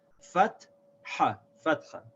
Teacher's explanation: we write this as FAT-HA because we want to make sure we don't pronounce the T and H together. It's not fatha, it's fatha, fatha.